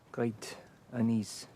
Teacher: he doesn't make the same r sound for great which would have made him sound very French